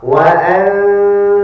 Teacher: I'm hiding the noon slightly. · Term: ikhfa